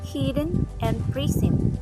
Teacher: sounds other than vowels may form sonority peaks like for example the word hidden and prism they have one vowel but they are two syllables